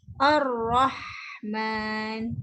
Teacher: ha pedas yang keluar adalah angin